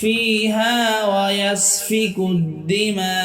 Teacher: মিমে চার আলিফটান এবং হামজাকে ছোট্ট করে ধরতে হবে।